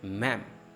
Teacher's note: Mem is stress, re or o is reduced. Memory. I have such a bad memory.